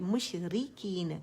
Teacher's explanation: را باریک ہے، تقریر کی مقدار زبر پیش کے مقابلے میں کم ہوگی